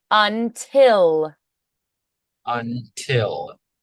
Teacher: a little higher pallet on the I before the L don't close too early